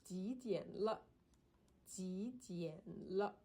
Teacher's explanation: that is a a final like particle that has no tone. It's a neutral tone. So, it's the same with the le. · So, the le is a neutral tone. There's no tone on it.